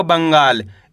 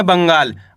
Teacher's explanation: आधा न का उच्चारण तेजी के साथ निकालना है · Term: अनुस्वार की मात्रा